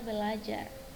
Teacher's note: Misalnya dalam bahasa Indonesia ada pada kata belajar yang berasal dari pembentukan kata ber tambah ajar yang seharusnya menjadi berajar, namun di sini bunyi R pertama didisimilasikan dengan bunyi L sehingga menjadi kata belajar.